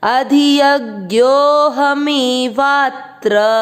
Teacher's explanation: खींचते हुए ह पूरा करना है